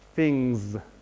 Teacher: at the end of things clearly she's got a very clear Z